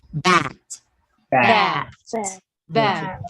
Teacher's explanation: Okay, next, a voice oral bilabial stop.